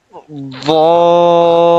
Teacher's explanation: The upper turned side of the tongue touches the gum of the upper back five teeth.